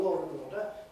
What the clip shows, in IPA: lɔːr